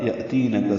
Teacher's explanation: हमज़ा साकिन झटके से, ती या मद्दा काफ बारीक अदा करेंगे।